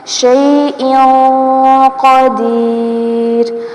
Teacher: زیر تنوین کی آواز کو ناک میں چھپائیں گے ، اس قاعدے کو اخفا کہا جاتا ہے۔ شیء قدیر، قاف